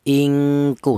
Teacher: Adna itu dengung lebih dominan daripada samarnya. Jadi cara bunyinya bunyi vokalnya ng ingku seperti itu yang kuat dengungnya.